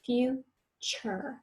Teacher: Talk about the CH. That T right before U-R-E is often made with the ch sound.